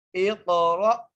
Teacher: حمزہ کو قاف سے ملانا ہے، قاف پر قلقلہ کرنا ہے اور قاف کو موٹا کر کے پڑھنا ہے۔ · را کے ساتھ حمزہ لکھی ہوئی ہے، اس کے اوپر جزم ہے، اس کو جھٹکے سے پڑھیں گے